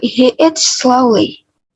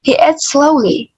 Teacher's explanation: Di dalam kalimat ini slowly adalah kata yang kita tekankan. Slowly kita berikan penekanan di huruf O dan juga pengubahan pitch nada lebih tinggi di bagian kata slowly.